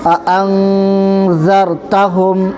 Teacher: نون ساکن کے بعد حروف اخفا کا زال آ رہا ہے، اس لیے آواز کو ناک میں چھپا کر پڑھیں گے